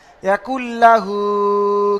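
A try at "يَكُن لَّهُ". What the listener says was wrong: লাহু টানবেন না, ইয়াকুল্লাহু।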